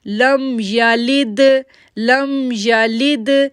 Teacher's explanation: اب دیکھیں لام کو دال کے ساتھ جوڑ رہے ہیں تو دال پہ جو ہے وہ کلکلا لیٹر ہے، دال جو ہے وہ کلکلا لیٹر ہے، وہاں پر ایکو ساؤنڈ بنتا ہے، اس لیے ہم بولیں گے لم یلد لم یلد ولم یولد ولم یولد.